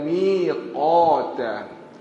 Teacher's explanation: Qaf dia tebal. Kalau mi ke ta tu nipis. Belakang sikit ya.